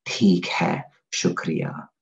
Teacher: it's a very specific kind of T sound and it has this aspiration as well.